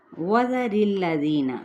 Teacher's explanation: و گول کر کے ہونٹ، زال نرمی کے ساتھ، را باریک پڑھتے ہوئے لام کے ساتھ ملائیں گے